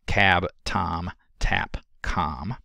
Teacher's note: The t would cause the tongue blade and tip to be raised toward the alveolar ridge